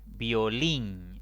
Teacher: es una palabra de dos sílabas contando de izquierda a derecha la mayor intensidad cae en la última sílaba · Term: palabras agudas